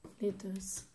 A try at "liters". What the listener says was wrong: You're saying an S. It's a Z.